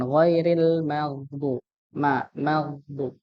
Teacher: Untuk huruf mimnya jangan ditebalkan, apalagi ketika lidahnya ikut naik begitu, ya, pangkal lidahnya ikut naik, maka kelihatan seperti tebal atau merubah jadi kayak ada sedikit imalahnya, sedikit ee-nya begitu, nggih.